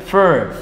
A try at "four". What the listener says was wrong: 4. Not fur. 4. with O. 4. Where is the R? Four. Four. Four.